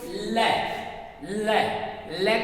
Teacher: ल को बोलते हैं तो जीवा पार्श्व भाग में जाती है, बगल वाले भाग में जाती है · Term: पार्श्विक